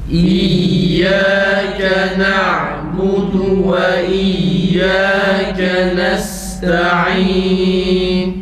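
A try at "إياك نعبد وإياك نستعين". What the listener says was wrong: Tekrar sondaki nun belli olsun.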